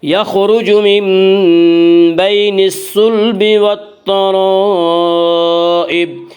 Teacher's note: والترائب میں مد متصل ہوگا، مد متصل وہ مد ہے جس میں حرف مد کے بعد حمزہ اسی لفظ میں ہو۔ مد متصل میں حفص کی روایت میں صرف توسط ہے، توسط کی مقدار 2 الف، 2.5 الف اور 4 الف ہے۔